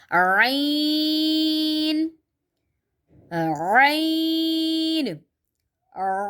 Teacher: आइन और हा ये दो ऐसे वर्ड हैं कि जो हलक के बीच से निकलते हैं